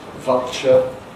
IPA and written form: ˈvʌlʧə (vulture)